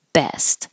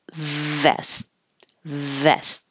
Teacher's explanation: your lips are beginning from a closed position B and releasing with a burst of air